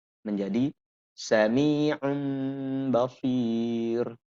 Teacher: Nun sama sekali tidak ada, dibalikkan suara nun ini kepada suara mim. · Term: iklab